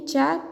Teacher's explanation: च तालव्य वर्ण है लेकिन महाप्राण नहीं है। यह अल्पप्राण है।